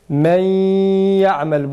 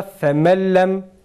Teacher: İkincisine yani ya'da gunne yapıyoruz, lamda yapmıyoruz.